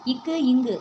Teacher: நாக்கோட முதல் பகுதி அன்னத்தின் அடிப்பகுதியா பொருந்துறதுனால பிறக்குது · இக்கு இங்கு ஆகிய இரு மெய்களும் எப்படி பிறகு நாக்கோட முதல் பகுதி அன்னத்தின் அடிப்பகுதியை பொருந்ததுனால பிறக்குது. இந்த படத்தில் பாருங்கள், நாக்கோட முதல் பகுதி எங்கே இருக்குது, அன்னத்தோட அடிப்பகுதி எதுவுமே.